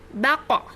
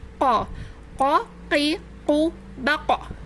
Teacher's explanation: Kita akan merasakan ada di pangkal lidah bagian dalam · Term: qaf